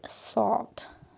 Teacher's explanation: Sad hərfini tələffüz edərkən dilin ucunu aşağı kəsikcə dişlərin ucuna toxundurmaqla tələffüz edirik. Qalın hərfdir.